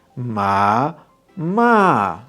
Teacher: i hope that you hear that the stressed syllable is the last one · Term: palabra aguda